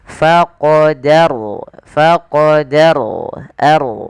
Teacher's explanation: Kemudian pada lafal faqarna di sini ada huruf ro yang sukun didahului dengan fathah maka kita namakan dengan hukum tajwid berupa ro tafkhim yang di mana rnya harus dibaca dengan tebal